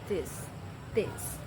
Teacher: Bunyi ini termasuk ke dalam bunyi voice karena menghasilkan getaran dan eh dental serta pricative.